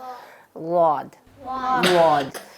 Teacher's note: ये बीच वाला ज़ुबान के साइड वाला, ठीक है, ज़ुबान की जो साइड है उसका मिड वाला हिस्सा लगता है ऊपर